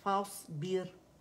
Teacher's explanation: रा मोटी पड़ी जाएगी, रवानी में पढ़ रहे हैं दम्मतैन के साथ. फस्बिर रा सुकून से पहले कसर आ रही, रा बारीक पड़ी जाएगी